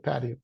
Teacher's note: If it's American, the T, as you know, sounds a little softer, like R.